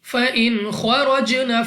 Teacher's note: نون ساکن کے بعد خا ہمارے پاس یہاں پہ اظہار کا قاعدہ ہے، بغیر غنہ کے پڑھیں گے۔ خا مستعلیہ میں سے ہے، موٹا پڑھنا ہے۔ را پر زبر را کو پر یعنی موٹا پڑھیں گے۔